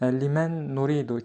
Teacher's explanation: İdğam qaydası sükunu nun və tənvinlərdən sonra altı hərf yə, ra, mim, ləm, vav, nun hərfləri gələrsə sükunu nun və tənvinlərdəki n səsi oxunmaz